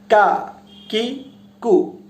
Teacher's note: যে কাফটা উচ্চারিত হবে জিহ্বার মাঝখান থেকে। উচ্চারণটা এরকম হবে কা, কি, কু।